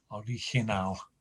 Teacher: the stress is right at the end of that word, not on the penultimate syllable like most words.